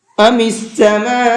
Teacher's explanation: سماء کے اوپر یہ بڑا مد بنا ہوا ہے، اس کو 4 سے 5 الف کے برابر کھینچ کر کے پڑھیں گے۔ 4 سے 5 الف کا مطلب ہوتا ہے 4 سے 5 یا 6 سیکنڈ تک اس کو کھینچنا ہے۔